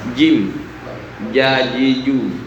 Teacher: Mestinya jim ada di tengah lidah, bukan di ujung lidah seperti ja. Ja itu bukan jim, tapi jim di tengah lidah. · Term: makhraj huruf jim